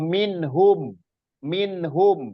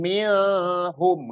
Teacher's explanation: Jadi minnya ini dibaca jelas itu makanya disebut izhar. Jadi bukan milhum enggak, tapi minhum.